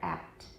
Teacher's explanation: The P is not released here. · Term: unreleased